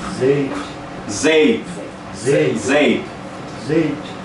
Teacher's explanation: O P é P. Você dá só um soprinho.